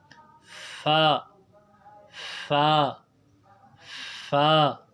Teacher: اوپر والے دانت جو ہے ہونٹ کے تر حصے سے نکلے تو وہاں سے فا نکلتا ہے